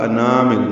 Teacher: میم کو الانامل کے لام سے ملا دیں گے، اظہار قمری ہوگا، انامل نا الف مدہ ہے، دو حرکات لمبا ہے